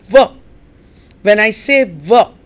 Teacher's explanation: I say V when I say V what am I doing the upper teeth are touching the lower lips and you've got V and F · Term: labio Dental